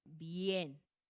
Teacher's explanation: como están formando un diptongo, se pronuncian en la misma sílaba